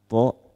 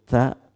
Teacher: tho tidak keluar udara ta keluar udara